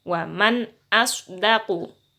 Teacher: Jadi nun sukunnya dibaca jelas, polos, apa adanya.